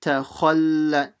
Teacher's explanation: So stop on the lam mushaddada to make sure you pronounce the double letter.